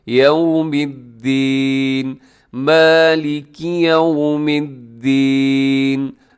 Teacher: यौ को ख्याल कीजिएगा कि यहाँ आपके होंठ गोल हो जाए ताकि यौ ना हो जाए बल्कि यौमिद्दीन, मालिकी यौमिद्दीन।